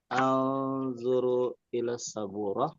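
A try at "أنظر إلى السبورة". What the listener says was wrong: Nah, nggak usah pakai ikhfa. Nggak usah baca Quran. Anzuru ya sabur. Baik, bukan baca Quran kita. nah ya untuk membaca bahasa Arab, hadis itu kita nggak usah pakai gunnah ya.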